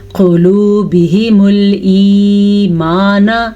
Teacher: یہ قاف موٹا پڑا جائے گا، ہا کی آواز چھاتی سے نکلے گی، اور ایمانہ میں یہ یا مدہ ہے، اسے ادا کیا جائے گا۔